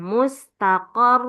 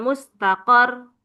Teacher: jadi lebih ditekan lama karena ada tasydid ya. Dan tidak boleh hilang tasydidnya ini.